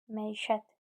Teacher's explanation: Vurğu üçüncü hecəyə düşür.